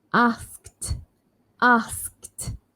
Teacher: You can actually omit k altogether and just think ast